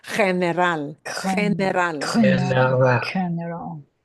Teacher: But here it's going to go to a soft sound, and the soft sound is going to be the throaty H. It'll sound just like the J letter.